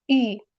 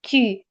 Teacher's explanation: U, ya'ni uy. Hali o'zbek tiliga monand u deb emas, chuqurroq o'qiladi